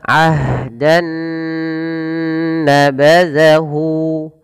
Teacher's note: di sini awalnya bunyi n ketemu dengan n yang selanjutnya Nun maka caranya masukkan Nun yang pertama kepada Nun yang kedua maka diidgamkan maka dinamakan dengan idgam Bah Nah kemudian ditahan dengan gunah maka